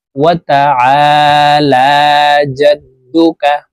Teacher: এই আইন হরফকে হলকের মধ্যখান থেকে চাপ দিয়ে উচ্চারণ করব।